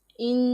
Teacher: نون مشدد ہے، اس میں غنہ کرنا ہے ہم نے۔ غنہ کی مقدار 1 الف کے برابر ہے